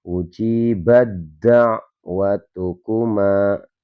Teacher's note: Ya, jadi di surat Yunus ayat yang ke-89 kita bacanya ujibat. Ya, huruf taknya ini hilang karena ini makhrajnya ini sama tapi sifatnya berbeda. Jadi langsung ujibat da'watukuma. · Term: idgham mutajannisain